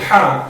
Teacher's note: ہا جو ہمیں ادا کرنا ہے یہ ہمیں حلق کے بیچ والے حصے سے ادا کرنا ہے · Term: وسط حلق